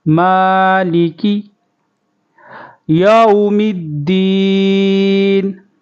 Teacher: میم کو ایک الف کھینچیں گے۔ مالکی یوم الدین، تشدید کا خیال کریں گے۔